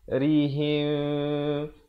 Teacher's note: mim mati bertemu ba. Ikhfa yakni kita mensamarkan bunyi mim dan di antara bunyi ba. Bunyinya nak kata mim pun tidak, ba pun tidak, dengan kadar 2 harakat. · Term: ikhfa syafawi